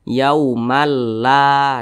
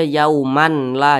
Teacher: bunyi tanwin ini dimasukkan ke huruf lam jadi dibaca yaumalla nah seperti itu jangan dibaca yauman la Jangan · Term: idgham bila ghunah, idgham bila gunnah